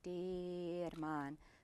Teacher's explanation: the R flips cleanly into the M. Both are voiced sounds. You stay on the breath.